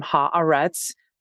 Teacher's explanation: pause between the first syllable and the second no pause between the second and the third